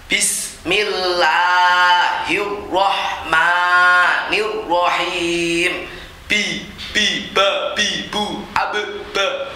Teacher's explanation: Ba ini makhrajnya syafatain bagian dalam. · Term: huruf ba